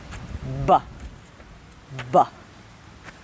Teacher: To make this sound, you put your lips together and then open them by pushing air out, but we also use our voice box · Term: voiced sound